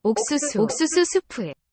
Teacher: I hear a sort of slow climb on the tone there.